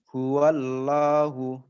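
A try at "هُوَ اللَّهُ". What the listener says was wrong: Huwallah. Tebalkan. Huwallah. Nah, itu masih belum masuk ke makhraj yang benar. Huwallah. Coba dialirkan. Huwallah.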